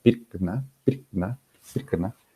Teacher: Por ejemplo, aquí en esta imagen, en la palabra pirkna, pirkna, pirkna, estamos viendo un contorno tonal alto en la primera sílaba y luego que este va descendiendo, ¿no? Esta característica, por ejemplo, o este rasgo acústico, fonético, evidenciaría pues que el acento se estaría alineando al extremo izquierdo de la palabra, ¿no?